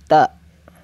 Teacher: Makhrajnya ujung lidah mengenai pangkal 2 gigi seri yang atas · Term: huruf ta